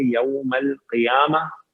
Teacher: یوما میں واو لین ہے، اس کو بھی نرم و ملائم پڑھیں گے